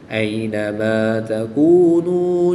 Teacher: نون ساکن کے بعد تا حروف اخفا میں سے ہے تو یہاں پر اخفا ہوگا یعنی غنہ زمانی کر کے پڑھیں گے۔